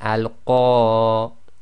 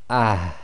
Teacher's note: effectively you've got to have a slight ah sound right at the end. So on that first sentence there, it will be al-Qariyah, and you'll hear a slight breath, a slight ha at the end coming from the bottom of the throat. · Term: TaaMarBooTah